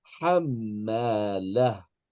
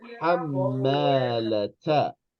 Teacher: if we are going to end on a ta marbuta, it's not going to be a ta anymore. It's going to be a ha. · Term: ha with a sukoon